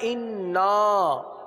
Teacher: نون پر تشدید بھی ہے، غنہ کریں گے، اور نون پر مد بھی ہے، مد کریں گے